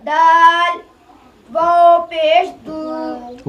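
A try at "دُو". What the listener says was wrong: वाव तो थोड़ा लंबा करें,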